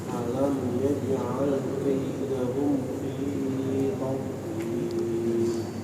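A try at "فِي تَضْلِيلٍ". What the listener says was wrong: Taknya tipiskan, tadlil.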